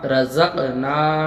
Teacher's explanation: رزقنا، را زبر را، اور زا کا زبر زق، اور نون علی زبر نا، رزقنا۔ را کے اوپر زبر ہے، را کو پر یعنی موٹا پڑھیں گے۔ زق میں قلقلہ ہو رہا، آواز پڑھتے وقت لوٹیں گی۔ · زق میں قلقلہ ہو رہا، آواز پڑھتے وقت لوٹیں گی۔ نا، الف مدہ ہو رہا، ایک الف کے برابر کھینچ کے پڑھیں گے۔